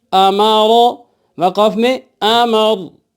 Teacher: اس سے پہلے والے حرف کے اوپر زبر یا پیش ہوگا، را پر ہم وقف کریں گے رکیں گے تب بھی را کو پر کر کے موٹا کر کے پڑھنا ہوگا